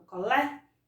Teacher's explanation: que ele é o acento agudo não se o circunflexo porque na hora que eu vou pronunciar Colé eu abro a boca a língua vai lá em cima do céu da boca